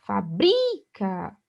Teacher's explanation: aqui a sílaba tônica é o bri